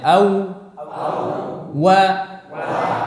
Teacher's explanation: Ketiga huruf ini makhrajnya sama dari dua bibir, namun cara pengucapan yang berbeda. Pertama, huruf waw, dia keluar dari dua bibir dengan memajukan kedua bibir itu